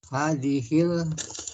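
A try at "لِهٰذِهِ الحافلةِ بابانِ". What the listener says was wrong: Li, ada li-nya. Lihadi.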